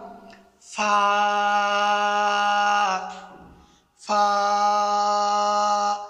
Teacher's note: উপরের দাঁতের কিনারা ও নিচের টুটের বিজা অংশ থেকে উচ্চারিত হয় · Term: হরফে শাফাবিয়া